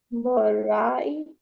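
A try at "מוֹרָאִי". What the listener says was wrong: Right, morai, morai. I think this one, again, just a vowel contracted a bit more than it should have. So just exaggerate the vowels and it'll be awesome. Where's the stress in this one? zakef gadol right there. That's the stress.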